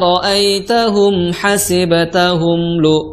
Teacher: suara samar yang ada di mulut dan suara dengung gunah yang ada di hidung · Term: ikhfa ausat